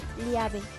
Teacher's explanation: La L suena L, lateral, palatal, sonora.